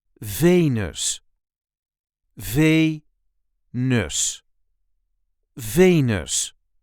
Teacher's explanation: There is a light emphasis on the first syllable.